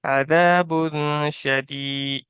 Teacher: یا مدہ کو ایک الف کے برابر کھینچیں گے